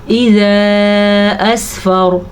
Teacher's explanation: یہ والی مد 3 سے 4 حرکات عربیہ کے برابر ہے، یعنی کہ 3 سے 4 سیکنڈ تک اس کو لمبے کرتے ہوئے جانا ہے۔ را کو ہم پر پڑھیں گے کیونکہ را ساکن ہونے کی وجہ سے پہلے حرف کے اوپر زبر ہے تو را پر پڑھی جائے گی۔